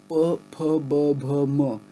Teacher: all of those are sounds you produce combining your lips